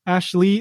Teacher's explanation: ashley the lee isn't accented so it doesn't sound as strongly